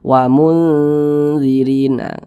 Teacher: jadi suaranya itu kita tahan kita panjangkan sejenak